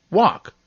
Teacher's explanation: i'm actually silent in some words when i'm followed by another consonant as in walk